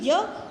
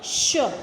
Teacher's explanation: आप इसका उच्चारण करके देखिए य श, यानी य जब हम बोलते हैं तो मुख से कम वायु बाहर निकलती है, जब हम श बोलते हैं तो मुख से ज़्यादा वायु बाहर निकलती है। य को बोलने के लिए कम जोर लगाना पड़ता है, लेकिन श को बोलने के लिए उससे ज़्यादा जोर लगाना पड़ता है। इसलिए जो य है वो अल्प प्राण है और जो श है वो महाप्राण है।